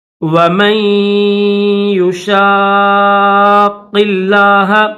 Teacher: میم کے بعد غنہ کر کے میم کو یا کے ساتھ ملائیں گے اور شین کو قاف کے ساتھ ملائیں گے اور قاف کو